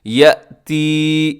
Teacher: یأتی یہاں حمزہ ہے اور جھٹکے کے ساتھ آپ اس کو ادا کیجیے گا۔ یا مدہ ہے آگے تو اسے کھینچیے گا۔